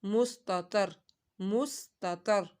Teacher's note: طا کو حروف مستعلیہ ہے، موٹا پڑھنا ہے، مس، سین کی سیٹی نکالنی ہے، مستتر۔